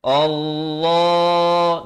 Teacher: dibacakan dengan baris fathah dengan tebal. Allah, 2 harakat. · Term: hamzah wasal